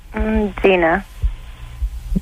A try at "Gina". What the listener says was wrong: Okay, how come your Gina sounds like you're starting it with a D?